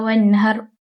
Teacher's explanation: Untuk ayat kedua, hukum taujid yang terdapat padanya ialah izhar halqi. Apabila nun mati bertemu dengan huruf ha, ia dibaca dengan menjelaskan bacaan nun mati tanpa dengung